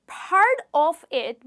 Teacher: So part of it becomes part of it, okay? Because the T in part gets linked to the O in the word of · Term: connected speech